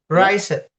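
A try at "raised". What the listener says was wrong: Rise it. No, we don't pronounce it like that. We pronounce it raise without any ed.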